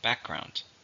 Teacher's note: How many syllables are in background? 2. Stress is on the first.